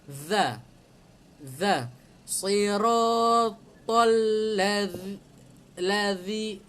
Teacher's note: makhraj dia keluarkan sedikit lidah di antara gigi atas dan gigi bawah. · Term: zal